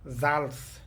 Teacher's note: German শব্দে এস এর পরে যখন ইংরেজি 5টি ভাওয়েল এবং জার্মানের 3টি উমলাউট, আ উমলাউট, উ উমলাউট, উ উমলাউট এগুলো থাকবে তখন এস এর উচ্চারণ বাংলা জয়ের মতো উচ্চারিত হবে